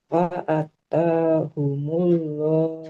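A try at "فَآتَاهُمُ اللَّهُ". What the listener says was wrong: Fa'ata. Nah, hamzahnya fathah ada alifnya panjang. Huruf ta'nya juga sama. Fa'atahumullah.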